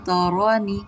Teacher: را پہ زبر ہے، را کو پر پڑھیں گے، تارانی نہیں کریں گے، رانی اسپیشل پر کریں گے۔